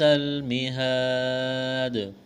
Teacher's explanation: الف مدہ ہے، ایک الف کے برابر کھینچنا ہے، وقف کریں گے، دال ساکن ہو جائے گی، دال پر قلقلہ کریں گے۔